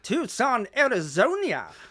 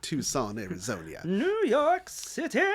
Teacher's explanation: he's adding extra syllables to make fun of Posh British well yeah he's very like his enunciation is very pronounced yes